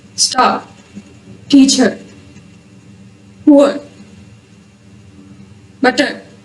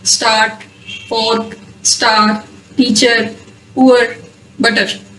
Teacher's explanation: R is silent in British English if it is followed by a consonant or at the end of a word. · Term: Silent R